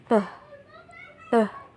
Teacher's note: Jadi saat mengeluarkan bunyi peh, peh, bibir menyatu rapat, menghalangi udara sesaat dan menyebabkan penumpukan tekanan udara. Bibir kemudian melepaskan tiba-tiba menyebabkan ledakan suara. Tempat artikulasi bunyi ini oleh karena itu disebut bilabial dan caranya disebut stop.